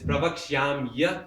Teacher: I felt really bad, And then not immediately, I didn't tell him, but later on, then we sat down and I explained to him, look, when sandhi happens in Sanskrit, then the original word is Pravakshyami, but that E at the end becomes a Ya as a result of sandhi